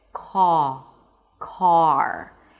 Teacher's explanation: So the tongue drops down, the back of the tongue pushes down a bit. The mouth opens and in this case because of the R the lips round a bit. C car. And then once you pronounce the vowel let's say 80% of the sound then the last 20% would be the R. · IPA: kɑːr